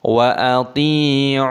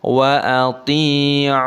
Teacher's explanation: toknya dipanjangkan, ainnya dipanjangkan, nunnya dimatikan, mata adilis sukun.